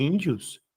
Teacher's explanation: E ao ler índios, só se eu forço para o i, índios, ou se eu tiro o acento para que eu pudesse ter o i tônico, né? Ou seja, o i aqui em índios é uma semivogal e não fica sozinha